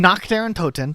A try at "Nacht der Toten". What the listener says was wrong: Nacht. It sounds like you're saying Naked of the Undead.